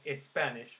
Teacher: after an s followed by a consonant we put an e